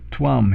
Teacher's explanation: it's actually a softer v it's more like a w